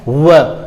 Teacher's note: व का उच्चारण स्थान दंत ओष्ठ होता है